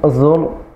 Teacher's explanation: ra-nya tebal lagi, ra sukun sebelumnya dhammah. Zurtumul maqabir, birnya tipis, kenapa?